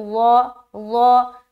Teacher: اب ضا کو موٹا کر کے ادا کریں گے بغیر سیٹی کے